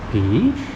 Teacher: PHI, but it has the rising tone.